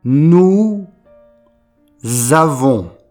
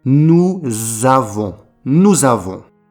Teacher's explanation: On ne prononce pas le S final et on fait la liaison entre nous et avons.